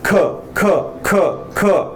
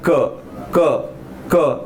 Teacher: ख चा उच्चार करताना शेवटी कशाचा आवाज येतो? ख. ह चा आवाज येतोय. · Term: महाप्राण